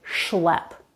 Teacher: when it's followed by another consonant, then it's going to be an SH sound like schlep.